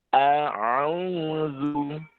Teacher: ketika membaca huruf ain, maka suaranya agak sedikit diayunkan.